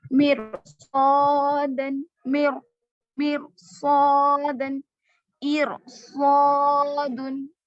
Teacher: रॉय साकिना से पहले जेर होने के बावजूद भी अगर रॉय साकिना के बाद हुरूफ मुस्तालिया में से कोई हर्फ आ रहा है तो उस रॉ को आप मोटा पढ़ेंगे